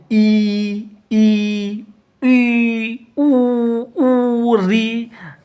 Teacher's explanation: संवृत का मतलब होता है बंद जिसको बोलने के लिए मुख सबसे कम खुलता हो ठीक है बिल्कुल बंद सा रहता हो जैसे ई ई के लिए बिल्कुल मुंह बंद रहता है।